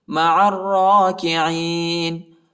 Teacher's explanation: عین کو را کے ساتھ ملائیں گے، الف اور لام نہیں پڑھا جاتا اور را کو شدت کے ساتھ پڑھیں گے اور موٹا بھی پڑھیں گے۔